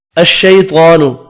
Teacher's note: الشیطان شیالین ہے، طا پر پڑھا جائے گا اور کھڑی زبر کی وجہ سے 1 الف کی مقدار میں کھینچ کر بھی پڑھیں گے